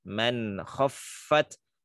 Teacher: man jangan dibaca mang, jangan dibaca ikhfa ya, dibacanya izhar halqi